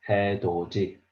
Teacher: So we have to read 해도 D, but the D sound here changed to J sound. So we read 해도지.